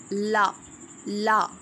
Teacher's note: ये भी वॉइस्ड हैं एल्वियोलर हैं ठीक है